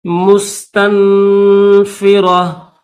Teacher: تا کے اوپر دو پیش سے اسٹاپ کریں گے تو ہا پڑھیں گے، اس گول تا کو ہا پڑھیں گے